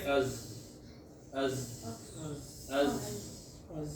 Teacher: अज आखिर तक आवाज जारी रहती है, सांस नहीं। · शिद्दत की तारीफ ये है कि हर्फ की आवाज बंद हो जाए, और अज़्ज़ा में आवाज बंद तो नहीं होती।